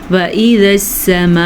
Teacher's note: یہ جو مد ہے اس مد کو 5 الف کے برابر لمبا کریں گے